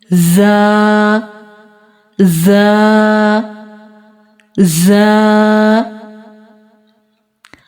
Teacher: یاد رکھیں زا سیٹی والے حروف میں سے ہے اور اس کو ادا کرتے وقت سیٹی کی آواز آنی چاہیے۔